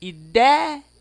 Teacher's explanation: O E é bem maior do que o I.